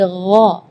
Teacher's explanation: kalau ga itu dia makhrajnya dari lidah. Ya, tapi kalau huruf ghain itu dari bagian tenggorokan ya. Jadi gha.